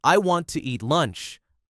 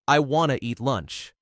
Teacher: Hear how want to becomes one quick sound?